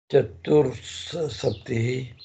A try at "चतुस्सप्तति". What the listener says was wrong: Chatus, not chatur.